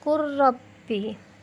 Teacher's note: Yang kelima, lafaz qul rabbi, maka lamnya lebur menjadi huruf ra menjadi qur rabbi.